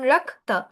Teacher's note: আচ্ছা, আম, সংস্কৃতর যুক্তাক্ষরগুলোর ক্ষেত্রে একটা কথা বলি, যে অক্ষরগুলো যেভাবে আছে, একটা যুক্তাক্ষরে যদি ক এর পর ত থাকে তাহলে ওটা কটা উচ্চারণ হবে, তটা উচ্চারণ হবে। প্রথমে কটা অল্প উচ্চারণ হবে, অর্ধেক, তারপর তটা উচ্চারণ হবে